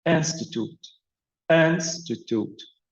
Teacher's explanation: so the stress on the first syllable